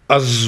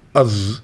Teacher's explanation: اگر زبان کو نیچے رکھے از بولیں گے تو دیکھیے شارپ از نکلتا ہے, لیکن دانت سے ٹچ کیا از تو وہ شارپنس نکل جاتی ہے